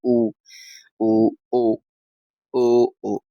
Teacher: वृत्तमुखी जो होता है, जिसमें होठ गोलाकार हो जाते हैं पूरे।